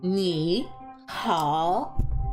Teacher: hello, so ni hao, all third tone, so down up for both of them